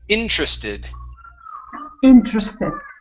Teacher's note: so our stress is at the very beginning